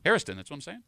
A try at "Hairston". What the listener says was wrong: I think you're saying Harrison. No, it's Hairston. There's no Harriston. No, Hair. It sounds like you were saying Harrison.